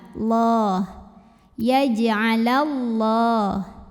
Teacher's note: Lam pada lafaz Allah dibaca secara tafkhim sebab huruf sebelumnya barisnya fathah. Maka bacanya ditebalkan.